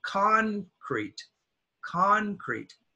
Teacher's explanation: the stress is on con, concrete, concrete